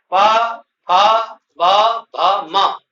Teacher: इन पांचों वर्णों का उच्चारण होठों के मिलने से होता है। होठों के खुलने से होता है। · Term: ओष्ठ वर्ण